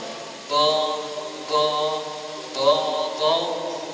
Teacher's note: tepi lidah kita itu akan berada di bahagian geraham atas sama ada sebelah kanan ataupun sebelah kiri kita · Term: huruf dad